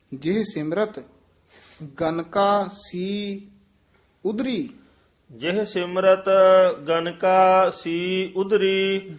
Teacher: ਇਹ ਗਨਕਾਸੀ ਇਕੱਠਾ ਨਹੀਂ ਕਹਿ ਦੇਣਾ ਆਮ ਗਨ ਕਾਸੀ ਬਣ ਜਾਂਦਾ ਜਿਹ ਸਿਮਰਤ ਗਨਕਾ ਸੀ ਉਧਰੀ ਜਿਹ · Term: ਠਮਕ